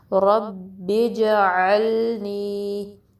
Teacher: را کو با سے ملانا ہے، با پہ ایک پریشر ڈلے گا